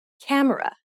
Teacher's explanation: when you say camera in English, you put stress on ka and say it for longer than the other syllables of the word.